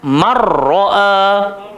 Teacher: So nun masuk dalam ra, ataupun bahasa saya macam nun tu tak wujud lah, dia masuk terus dalam ra. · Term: idgham